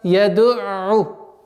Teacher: На местонахождении гортани айн останавливаемся и оттуда отталкиваемся. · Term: звук айн